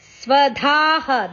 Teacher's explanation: ಧ ಮಹಾಪ್ರಾಣ ದೀರ್ಘ ಅಕ್ಷರ